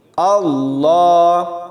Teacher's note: حمزہ کو لام کے ساتھ ملاتے ہوئے باریک پڑھنا، ایسا نہیں کریں گے، اس کو موٹا پڑھنا ہے، اللہ، اللہ، اللہ ایسے نہیں، اللہ ایسے پڑھا جائے گا۔